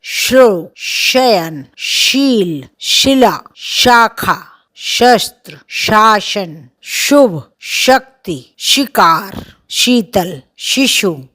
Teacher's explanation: इसका उच्चारण तीखा, तीव्र होता है और थोड़ा तालु पर जोर लगाना पड़ता है, तालव्य है।